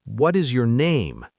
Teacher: Voice drops on name. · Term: information drop